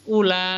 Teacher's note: Kemudian yang mat far'i, nah di situ ada mat wajib muttasil. Nah, kalau mat wajib muttasil itu panjangnya 3 alif atau 6 harokat